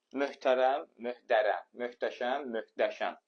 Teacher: Zaten məşhurda h-nın qarşılığı yoxdur, necə dəyişsin, yazıq. Sonra, h-t hərf birləşməsində tələffüz zamanı bəzən t-lar d kimi tələffüz olunur.